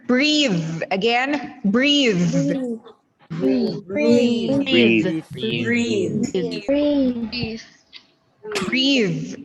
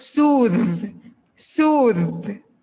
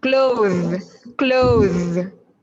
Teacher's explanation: we have the words with the voice TH sound in the final part of the word